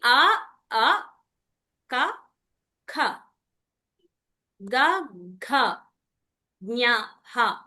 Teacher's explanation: వీటిని కంటవ్యాలు అంటారు ఎందుకు అంటే ఇవి మనం కంఠం కంఠం అంటే ఏంటి ఇక్కడ గొంతు ఇక్కడి నుంచి గొంతులో నుంచి పలుకుతాం వీటిని అందుకని వీటికి కంటవ్యః అని పేరు వచ్చింది.